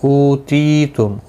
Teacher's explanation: او واو مدہ ہے، تی یا مدہ ہے، دونوں کو ایک ایک الف کی مقدار کے برابر کھینچ کر پڑھیں گے. میم ساکن پڑھا جائے گا وقف کی صورت میں.